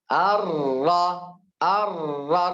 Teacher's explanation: Ar-ra fathah jangan ar-ru. Ar-Rahman, ar-ra karena harakatnya terbuka.